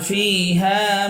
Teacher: ফিতে এক আলিফ টান, হাতে এক আলিফ টান।